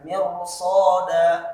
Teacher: Jadi ra-nya tebal dibaca.